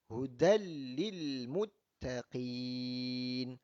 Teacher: Tanwin bertemu dengan lam, hukumnya adalah idgham bila gunnah.